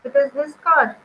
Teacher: we are rising at car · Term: rise at car